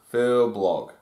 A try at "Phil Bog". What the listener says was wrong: No L in the blog.